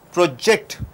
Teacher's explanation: When you stress on ject, it becomes verb.